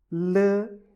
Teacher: You don't use your nasal cavit for L. The sound comes directly from your mouth.